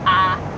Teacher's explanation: Southerners are known for using that flat I so much that it's been called the Confederate vowel